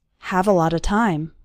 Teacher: all of those little words a lot of run together into a lotta